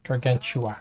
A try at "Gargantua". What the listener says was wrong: There's no L. Gargantua.